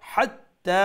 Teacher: middle থ্রোটর গলার মধ্য অংশ থাকি যে বড় হা